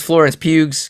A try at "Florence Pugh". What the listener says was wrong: think it's just Pew. Pew. Yeah, no, that's not pronounced Pug. Yes, in a pew. pew.